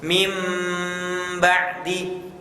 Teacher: nun sukun atau tanwinnya diubah menjadi mim dengan tempo gunnah yang dipanjangkan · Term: iqlab